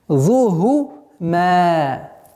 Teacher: Так как ха и фа, они являются фрикативными звуками, которым при произношении струя воздуха продолжает выговариваться, нужно до конца а не хифзухума.